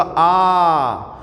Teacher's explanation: तो हमारा जो बड़ा आ है इसके उच्चारण में मुख द्वार पूरा खुल जाता है, इसलिए हमारा ये बड़ा आ जो है ये क्या है, विवृत स्वर है।